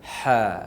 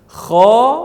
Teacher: Ha berada di tengah halqum, kha berada di hujung halqum, dekat makhrajnya, sama-sama halqum ataupun leher.